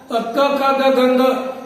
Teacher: यानी इनका क ख ग गंग इनका उच्चारण करते समय जो हमारी जीवा है ना, जीवा का कंठ को स्पर्श होता है, इसलिए इनका स्थान हो गया कंठ।